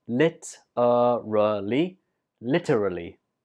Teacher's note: And the stress is on the first syllable.